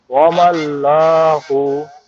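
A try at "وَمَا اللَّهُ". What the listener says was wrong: ওয়ামা আল্লাহ। এটা কি মোটা হবে নাকি? এটা কিন্তু মোটা হবে না। ওয়ামা আল্লাহু। ওয়ামা আল্লাহু। এখানে কোনো কি হবে না, এখানে কোনো মোটা হবে না। ওয়ামা আল্লাহু। লামটা সিম্পল উচ্চারণ হবে।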